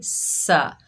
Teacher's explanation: सीन को सख्ती और सीटी से अदा करेंगे